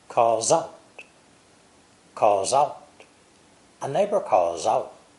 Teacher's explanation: The words calls and out are also joined together with a Z sound.